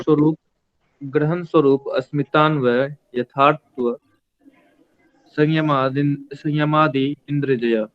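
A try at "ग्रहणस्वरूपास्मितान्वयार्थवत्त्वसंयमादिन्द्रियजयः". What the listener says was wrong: यथार्थ नहीं है। अगर आप अलग अलग करेंगे तो आप पढ़ेंगे संयमादि इंद्रिय जय। यहाँ पर संयमादि इंद्रिय जय, संयमात इंद्रिय जय ऐसा है। ग्रहण स्वरूपास्मितान्वयार्थवत्व संयमाद इंद्रिय जय।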